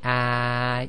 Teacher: if you say ah you'll notice your tongue goes almost completely flat all the way from the front to the back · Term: fat alif